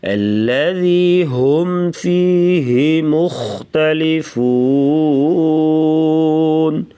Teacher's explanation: الذی کی جو ذال ہے اسے نرمی سے پڑھیں گے، اور جو یائے ہے یائے مدہ ہے اسے ایک الف کے برابر لمبا کر کے پڑھتے ہیں. ہم پہ اظہار کریں گے یعنی غنہ نہیں ہوگا.